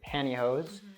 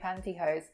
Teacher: Yeah, so the pronunciation there is even different because I would say that in T, I would drop the T, so I say pantyhose, but you say the T